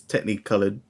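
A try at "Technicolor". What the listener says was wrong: I love how you pronounce TechKNEEcolour with a knee in the middle. Not TechNEEcolour. TechKNEEcolour.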